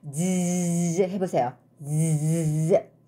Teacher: 스 할 때하고는 또 달라요. 혀 끝이 좀 스 할 때보다가 강하게 즈 하면은 강하게 간지럽거든요. 파열과 마찰이 같이 일어나기 때문이에요.